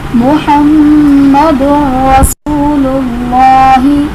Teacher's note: میم مشدد ہے اس لیے ہم یہاں پر غنہ کریں گے۔ محمد میں تنوین کے بعد دال پر تنوین ہے، اس کے بعد حروف یرملون میں سے را آ رہا ہے تو یہاں پر ادغام بلا غنہ ہوگا، یعنی ہم یہاں پر غنہ نہیں کریں گے۔ · اور رسول اللہ میں واو ساکن سے پہلے پیش ہے، واو مدہ کا قاعدہ بن رہا ہے، اور اس میں جلالت اللہ عز و جل کے لام سے پہلے پیش ہے تو اس لیے ہم اس میں جلالت اللہ عز و جل کے لام کو پر یعنی موٹا کر کے پڑھیں گے